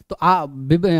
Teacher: आ open है आ का छोटा भाई अ है तो हाफ ओपन हो जाएगा